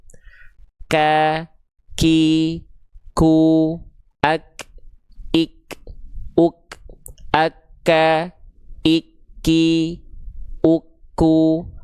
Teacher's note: Pangkal lidahnya nempel di antara langit-langit yang lunak dan keras. Sehingga ketika dilafalkan kalau nempelnya tepat seperti itu, maka huruf kaf akan mengalirkan percikan nafas.